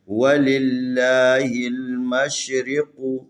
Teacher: یہ قاف حروف استعلاء میں سے اس کو موٹا کر کے پڑھیں گے، تفخیم